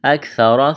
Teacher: اخفا کریں گے، فَإِن كَانُوا مد ہے کھینچنا ہے، اکثر سا کو نرم کرنا ہے، را کے اوپر زبر ہے موٹا کریں گے